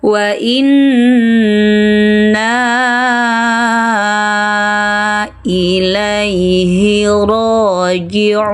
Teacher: Wa inna memanjangkan 4 sampai 5 harakat.